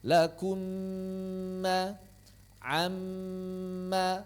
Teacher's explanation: karena mim ini bertasydid maka dia juga ditahan dua harakat